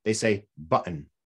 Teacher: they say button they drop the t